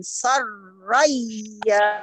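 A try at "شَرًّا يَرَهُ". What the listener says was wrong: Jangan soroy, syaroy.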